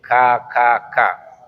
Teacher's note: kaf itu salah satu sifatnya adalah hams. Ketika mengucapkan huruf itu berarti udaranya mengalir.